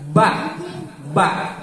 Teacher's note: biwir luhur jeung biwir hanap diantelkeun nepi ka rapet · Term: huruf ba